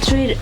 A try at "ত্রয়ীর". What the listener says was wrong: ত্রয়ীর ঠিকই আছে। হ্যাঁ, না ট্রয়ের শোনা গেছে আবার।